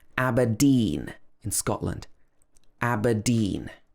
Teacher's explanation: So this should be pronounced Aber, not Aber. And the stress is actually on the second syllable here. Aberdeen in Scotland.